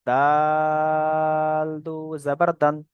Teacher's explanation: দালটাও তিন আলিফ পরিমাণ টান, সেই জন্য দালটাকেও বেশি করে টান দিলাম